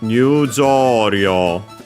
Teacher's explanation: So yeah, low, high, high and everything else low.